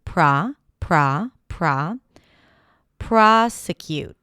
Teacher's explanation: Prosecute. The primary stress here is on the first syllable.